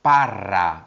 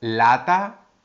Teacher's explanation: Y también es muy importante recordar la diferencia entre la letra L y la letra R. La R es más vibrante. Lo notas aquí, en la garganta.